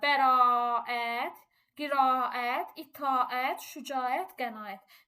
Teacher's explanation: Bu sözlərin yazılışı və deyilişində heç bir fərq yoxdur. Bəzən uşaqlar elə bilir ki, bunların arasına y samiti əlavə olunur. Xeyr, bu hərflərdə bir dənə uzanması var. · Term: uzanan səsi